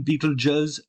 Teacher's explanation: pronouncing this SE at the end as a Z is very, very common